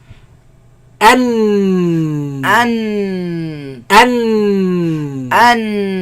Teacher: And in the sides closed, the sound goes back and comes from the nose. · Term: noon